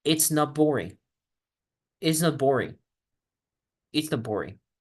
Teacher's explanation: la T desaparece y solo pronuncio la B · Cuando yo junto la T con la B, la T se convierte en una P. Recuerden, esto es asimilación.